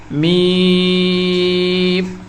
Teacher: اسے ادا کرنے کے لیے دونوں ہونٹوں کے خشک حصے کو آپس میں ملائیں اور کہیں، تھوڑا لمبا کر کے پڑھیں گے میم۔